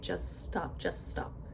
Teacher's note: Completely remove the T. So it's as if it's spelled J U S T O P. And we, as we know, when you have two consonants that are the same back to back, we just say it once.